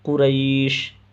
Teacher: قریش، قریش پہ جو ہے یا ساکن سے پہلے را کے اوپر زبر ہونے کی وجہ سے یا لین ہے، اور یا لین کو نرمی سے جلد ادا کیا جاتا ہے۔ یا لین میں طول، توسط، قصر تینوں جائز ہے، لیکن قصر کرنا، جلد پڑھنا یہ بہتر ہے، افضل ہے۔